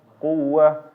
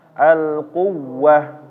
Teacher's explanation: ketika mengucapkannya, maka dia suaranya atau hurufnya ditekan, yang menyebabkan suara agak naik ya.